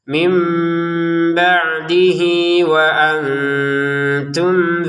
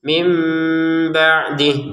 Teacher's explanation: kan enggak ada panjang sama sekali karena pernah kita berhenti. Kalau kita melanjutkan, maka h-nya ini kita panjangin dua harakat karena harakat kasrah diiringi ya kecil ini ya. Perhatikan ya kecilnya.